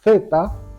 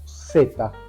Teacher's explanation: no hacemos diferencia entre la s y la z